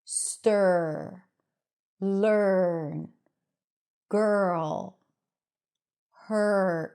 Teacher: We don't add a vowel in between. The R takes over the vowel sound. Okay? And you basically want to connect the consonant before to the R. · So you anticipate the R. The R comes in really quickly after the first consonant. Girl. So it feels like there is no vowel sound here. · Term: r vowel, as in stir, R vowel